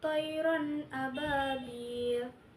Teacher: Karena tanwin bertemu dengan huruf alif itu dibaca jelas, tidak berdengung sama sekali. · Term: izhar halqi